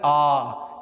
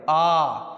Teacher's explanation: ऐसा स्वर जिसको बोलते समय सबसे ज्यादा मुख खुलता है वो है आ इससे ज्यादा मुंह नहीं खोल पाएंगे आ देख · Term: विवृत स्वर